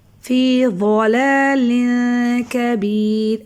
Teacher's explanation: ضاد بھی مستعلیہ حروف میں سے، اس لیے اس کو ہم موٹا پڑھیں گے۔